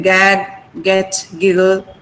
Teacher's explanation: g is a voice sound, so there is no aspiration over there.